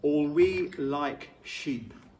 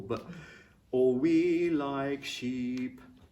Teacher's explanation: Put the K on in like, and it's difficult to enunciate a P and make it audible.